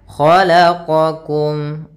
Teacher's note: Kita panjangkan 2 harakat. Khalaqakum, kha tebal isti'la, qa juga sama.